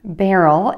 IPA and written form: ˈbærəl (BARREL)